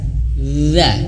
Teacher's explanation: Fa'aina taz, ketika taz lidah kita di sini, ya huruf za di sini, za. Huruf za ujung lidah menyentuh ujung gigi dari atas.